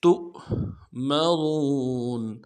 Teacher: دال میں کھینچیں گے، تا کو حمزہ کے ساتھ ملانا ہے، یہ حمزہ بشکل واو ہے، یہ اصل میں واو ہے لیکن یہ حقیقتاً حمزہ ہے، تو حمزہ کا پڑھیں گے، واو نہیں پڑھیں گے۔